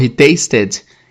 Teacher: Aqui, tasted é um verbo regular no passado. E o ED tem som de ED mesmo porque taste termina com som de T